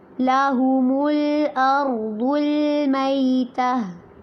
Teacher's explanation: ارض میں ضاد تو پر ہوگا لیکن لام کو باریک رکھنا ہے